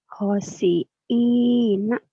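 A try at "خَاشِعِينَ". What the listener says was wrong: kho-nya panjang. Khosyi'ina.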